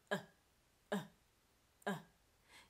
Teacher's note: is becoming glottalized we're replacing it with a glottal stop so instead of pronouncing the fully aspirated T sound TTT we're doing this throaty action we're stopping the flow of air out of our mouth but